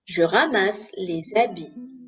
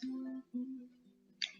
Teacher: in les habits here we have a small liaison because it's ending with S and then the H is mute. Starting with a vowel, I will link the word.